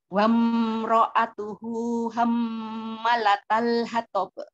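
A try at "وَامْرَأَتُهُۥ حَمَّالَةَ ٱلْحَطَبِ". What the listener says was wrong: Manya panjang. Hamma. Ukti di mimnya masih pendek sayang ya di ayat 4. Wam ini juga jangan terlalu lama nahan wam, tapi jangan terlalu cepat, jangan terlalu lama nahan mimnya.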